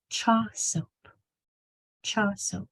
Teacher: You only need to say the 2 S's once.